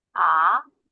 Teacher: Second tone sounds like when we are asking a question.